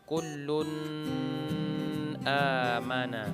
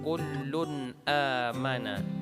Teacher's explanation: Idhar dibaca secara jelas dan terang dan tidak berdengung.